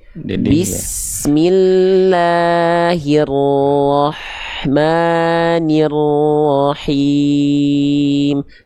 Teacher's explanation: Jadi yang ditekan cuman huruf ro aja. Hak kecilnya cuman disabet pakai nafas berbisik.